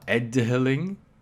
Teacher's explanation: this could very well be pronounced as edhiling, where this would be actually an aspirated D sound